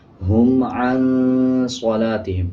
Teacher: نون کے اوپر اخفا ہوگا، صاد کو پر پڑھیں گے، لام کے اوپر زبر ہے، اس کے بعد الف ہے، حروف مدہ بن جائے گا، 1 سیکنڈ لمبا کریں گے۔